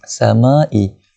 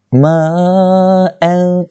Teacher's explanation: Cara bacaan dia 4 ataupun 5 harakat panjang dia. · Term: mad wajib muttasil